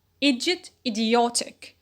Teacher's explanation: we notice not only a stress shift from e to o but as well a change in vowel quality from ear in idiot to or in ortic next noun root